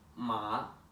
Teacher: the fourth tone which goes down